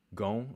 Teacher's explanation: the N can be pronounced as nasalization on the vowel